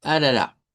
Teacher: solo tendríamos pura R, eh, como que fuera suave.